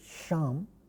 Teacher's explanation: Sha is clearly a palatal fricative.